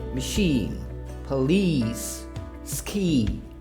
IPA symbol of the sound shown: iː